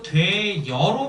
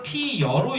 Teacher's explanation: 단모음과 단모음이 왔을 때 앞에 있는 단모음은 그대로인데 뒤에 있는 단모음이 이중모음이 되는 경우가 있다. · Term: 반모음이 첨가된